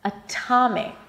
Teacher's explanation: Not only that it's not a flap T, it's actually a strong aspirated T with a little H after